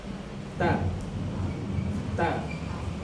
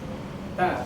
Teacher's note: Ujung lidah bertemu dengan pangkal gigi seri yang atas.